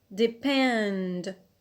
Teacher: Here the stress is on the alt, on pend. Why? Because we have applied rule 1B.